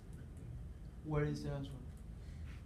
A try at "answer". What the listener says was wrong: You have to say, not answer, answer, like, sir. Yeah, because even though it's got SW, we don't say swer.